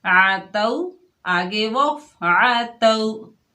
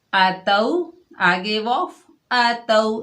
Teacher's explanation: آتو آگے وقف آتو. دیکھیے عین اور حمزہ جب متحرک ہوتے ہیں، جب ان کے اوپر زبر ہوتا ہے تو خاص خیال رکھا جائے کہ ان کی آوازیں آپس میں ملے نہ